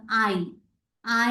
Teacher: ആ എന്ന് പറയുന്ന വവൽ സൗണ്ടിൽ തുടങ്ങിയിട്ട് ഇ എന്ന് പറയുന്ന വവൽ സൗണ്ടിലേക്ക് അത് ഇങ്ങനെ ഗ്ലൈഡ് ചെയ്ത് പോകും, അല്ലെ? അതുകൊണ്ടാണ് നമ്മൾ അതിനെ വവൽ ഗ്ലൈഡ്സ് എന്ന് വിളിക്കുന്നത്. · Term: ഡിഫ്തോങ്